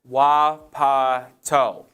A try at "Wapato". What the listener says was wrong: Wapato. No, you're putting too much emphasis on the wa. Yeah, Wapato. Wapato.